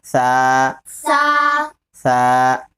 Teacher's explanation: سا کا مخرج زبان کی نوک اور اوپر کے دانتوں کے کنارہ. سا، جڑ سے تا نکلتا ہے اور کنارے سے سا.